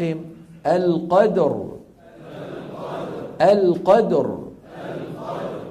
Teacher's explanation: فاذا وقفنا بالسكون تصبح الراء ساكنه و قبلها مفتوح فنفخ